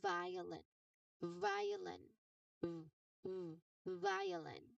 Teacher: Now to make this particular sound, you press the edge of your top front teeth lightly against the inside of your bottom lip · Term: voiced sound